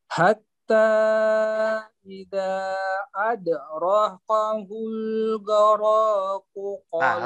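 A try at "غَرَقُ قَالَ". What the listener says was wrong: Ro-nya pendek Pak ya? Goroku, ro-nya pendek.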